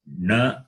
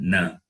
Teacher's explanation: Na and na. One is cerebral, other one is dental. So this is the cerebral na.